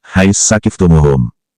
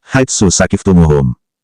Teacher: Sedangkan dalam contoh surat Al-Baqarah, ayat 190, kalau dibaca idgham, maka dibacanya, hais sakiftumuhum. Huruf sa yang kedua ditasydidkan setelah huruf sa yang pertama dimatikan untuk persyaratan idgham. Kalau dibaca ishar, kedua huruf sa dibaca dengan jelas, yakni, haitsu sakiftumuhum.